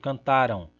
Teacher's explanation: E percebam que essa última sílaba é ão, tem um ditongo nasal aí. Só que esse ditongo nasal é átono, porque a tônica está aqui no tá, cantar. e aqui o ditongo nasal é tônico.